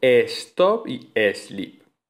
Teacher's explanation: En los anglicismos se escriben igual, stop y sleep, pero se pronuncian con esa e protética, con ese sonido e protético, stop y sleep.